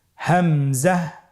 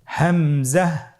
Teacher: হামজা হরফটি উচ্চারণের ক্ষেত্রেও বারিক করে উচ্চারণ করতে হবে এবং এখানে টেনে পড়া যাবে না দ্রুত পড়তে হবে